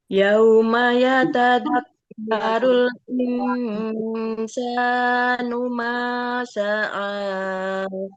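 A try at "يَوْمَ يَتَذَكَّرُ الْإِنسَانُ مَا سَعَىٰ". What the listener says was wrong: Iya, lanjut Ibu.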